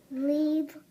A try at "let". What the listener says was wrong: La. And you said eat. Leet. Is that a real word? Leet. Let's try that other sound for E. What's the other sound for E? Eh. Let's try that one.